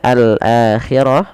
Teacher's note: alif lam yang kita tuliskan dan kita baca dengan jelas suara lam ya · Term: alif lam qamariyah